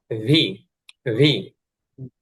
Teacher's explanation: ভি মানে আমরা দুই ঠোঁটটাকে লাগাবো না, একটু ফাঁকা রাখবো